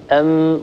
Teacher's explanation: أما بالنسبة لصفاتها فإن الميم حرف مجهور، هذه هي أول صفة من صفات حرف الميم، لأننا حينما ننطق حرف الميم يتضام الوتران الصوتيان على بعضهما، ولا يجري نفس أو ينحبس نفس كثير عند نطق هذا الحرف. · لو نطقنا ميما وقلنا أم ووضعنا يدنا على الحنجرة سنلاحظ اهتزاز الوترين الصوتيين في الحنجرة. أيضا إذا وضعنا يدنا أمام فمنا سنلاحظ أنه ثمة انحباس كثير لهواء النفس. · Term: الجهر, صفة الجهر